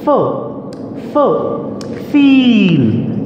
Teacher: Your upper teeth touch your lower lips. Okay, and then you push air forward in your mouth, you produce the sound f. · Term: labiodental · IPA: /f/